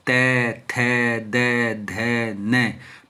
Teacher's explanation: ये दंत है त थ द ध न पांचों वर्ग दांत जीभ आकर के दांत से टकराती है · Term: दंत्य